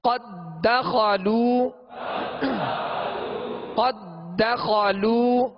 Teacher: اب یہاں ادغام مثلین تام ہے، یعنی قد داخلوا نہیں پڑھیں گے، دال کو دال میں مکمل داخل کریں گے